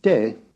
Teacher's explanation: the falling tone of the grave